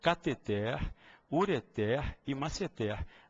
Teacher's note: as três sem acento as três oxítonas